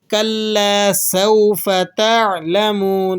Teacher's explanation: سین کے اندر حروف صفیریہ میں سے ہے سین، سیٹی کی سی آواز نکلے گی